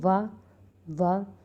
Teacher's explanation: जो हमारा ओठ है वो दांतों के नीचे आता है और वाह ध्वनि निकलती है